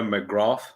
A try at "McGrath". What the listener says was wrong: McGrath. If that's the Irish name, it's pronounced McGrath. no. The th is silent.